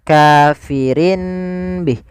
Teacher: Ada tanwin bertemu dengan ba itu biasanya kita hukumi dengan bacaan iqlab. Iqlab itu mengganti suara nun menjadi suara mim. Maka di sini ditandai dengan huruf mim kecil.